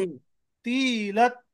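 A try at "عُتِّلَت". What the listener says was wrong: आप ये भी ता पढ़ रही है, ता नहीं है, तो है ये। उत्तीलत। उत्तीलत। उत्ती बोले तो बिल्कुल लंबी ता हो जाती है, जो ता है ये ता हो जाती है ऐसी। हमको ये ता नहीं पढ़ना है, ये तो पढ़ना है हमको। उत्तीलत।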